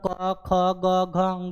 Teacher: क वर्ग का उच्चारण स्थान कंठ होता है